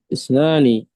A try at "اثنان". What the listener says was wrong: اثنان بالثاء يا بالثاء الثاء، dua